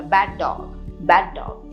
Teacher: एक ही डी का प्रोनाउंसिएशन में करते हैं